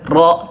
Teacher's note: Huruf ro berharakat fathah bergaris atas ro tebal